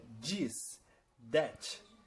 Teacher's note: Algumas palavras como, por exemplo, this, that, eles pronunciam com um D, um som de D bem forte, bem puxado no lugar do TH. Aí ficaria this, that.